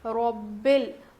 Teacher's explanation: اور را کو موٹا پڑھیں گے ربل. اور یہاں پر ایک غلطی اور بھی کرتے ہیں، ربل پڑھتے ہیں رب العالمین.